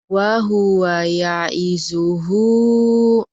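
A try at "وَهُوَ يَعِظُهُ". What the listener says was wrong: Wa huwa ya'izu, jangan ya isuhu ya, jangan ke S tapi zo ke Z ZHO ya. Wahu, tapi jangan dimonyongkan. Itu mirip-mirip tapi bukan seperti zo, bukan. Wa huwa ya'izuhu ya.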